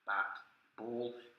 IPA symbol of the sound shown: b